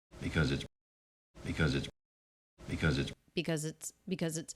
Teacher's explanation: do you hear how flat that is we don't have that up down shape those words are unstressed